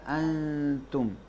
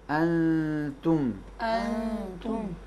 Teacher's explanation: نون ساکن کو اور تنوین کو تے میں چھپائیں گے